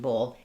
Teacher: So when I say ball, my mouth is going to be more open for that vowel. Bowl is going to be more closed and more rounded and it'll slide. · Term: O dip thong, o diphthong